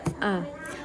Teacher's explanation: Huruf alif ini berasal dari alhalqu yaitu tenggerokan bagian bawah